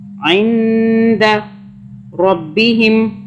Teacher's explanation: را کو ہم نے پر پڑھا، یعنی کہ منہ بھر کے پڑھا. را باریک نہیں پڑھنا، ذرا موٹا کر کے پڑھنا ہے.